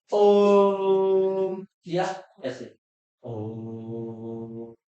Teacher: बहुत देर तक उच्चारण किया, इसलिए इनको बोलते हैं प्लुत स्वर